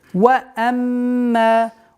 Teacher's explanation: Удержание назализации в размере двух огласовок, после которого долгота в размере двух огласовок фатха.